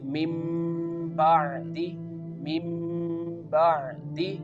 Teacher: Here the noon change into meme. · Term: iqlab